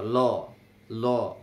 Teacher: পার্শ্বিক ধ্বনি উচ্চারণের সময় আমাদের এই মুখের দুই দিক দিয়ে বাতাস বের হয়ে যায়, আর জীব দাঁত অথবা দন্তমূলে অবস্থান করে, দাঁতে অথবা ল বাতাস দুই দিক দিয়ে বের হয়, এই জন্য লটা হলো পার্শ্বিক।